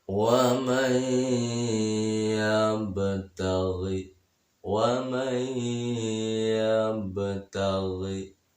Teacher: nun mati bertemu dengan iya yang bertasydid, maka hukumnya adalah idgham bi gunnah